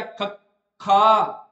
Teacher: ਜਿਹੜੀ ਸਾਹ ਦੀ ਮਾਤਰਾ ਜਾਂ ਸਾਹ ਦੀ ਜਿਹੜੀ ਹਵਾ ਹੈਗੀ ਹ ਉਹਦੀ ਮਾਤਰਾ ਸਧਾਰਨ ਨਾਲੋਂ ਨੋਰਮਲ ਨਾਲੋਂ ਥੋੜੀ ਜਿਹੀ ਵੱਧ ਆਵੇ ਜਾਂ ਵੱਧ ਵਰਤਣੀ ਪਵੇ ਉਹਨੂੰ ਆਪਾਂ ਕੀ ਕਹਿ ਦਾਂਗੇ ਮਾਂ ਪਰਾਾਣ · ਜਿਨਾਂ ਨੂੰ ਉਚਾਰਨ ਸਮੇਂ ਜ਼ਿਆਦਾ ਮਾਤਰਾ ਦੀ ਜਰੂਰਤ ਪੈਂਦੀ ਹੈ ਦੀ ਹਵਾ ਦੀ ਮਾਤਰਾ ਜ਼ਿਆਦਾ ਲੱਗਦੀ ਹੈ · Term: ਮਹਾਂ ਪ੍ਰਾਣ